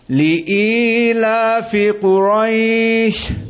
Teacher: kalimat Quraisy, maka dia adalah mad lin. Maka dua harokat